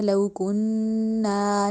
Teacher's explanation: نون پہ ناک میں آواز لے کے گئے ، لو کننا نہیں، تیزی تیزی میں نہیں کہنا، ہم نے